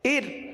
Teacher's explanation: اور حمزہ را زیر ار، اس را کو، ار والی را کو باریک پڑھیں گے، کیونکہ را ساکن سے پہلے زیر ہے، لہٰذا را کو باریک پڑھیں گے